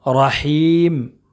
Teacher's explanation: اور یا مدہ ہے لیکن وقف کرنے کی وجہ سے یہ مد عارض وقفی ہو جائے گا، اس کو ایک الف نہیں کھینچیں گے بلکہ زیادہ کھینچیں گے